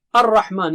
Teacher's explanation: لام جو ہے را میں چلا گیا ہے، الرحمن کے بجائے الرحمن ہو گیا۔